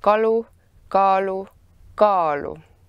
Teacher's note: The quantity degrees interact closely with pitch and stress. The first syllable is always stressed, and in the syllable a three-way length opposition occurs for vowels.